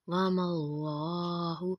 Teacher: لفظ اللہ سے پہلے حرف کے اوپر زبر ہے، اس لیے اللہ کے لام کو موٹا پڑھیں گے